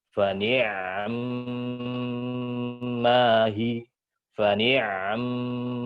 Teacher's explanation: Ainnya sukun, kemudian mimnya sempurna dengan gunnahnya, gunnah kamil yang sempurna.